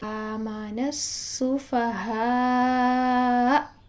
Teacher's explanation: آپ آواز کو تھوڑا لاؤڈ کریں، حمزہ پر جاتے جاتے لاؤڈ کریں اور پھر اس کے بعد جھٹکا دے کر آواز کو بند کریں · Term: حمزہ ساکنہ